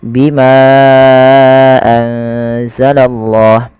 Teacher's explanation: kata maka kita namakan dengan majaiz munfasil untuk majaiz munfasil sendiri panjangnya dalam empat harakat atau lima harakat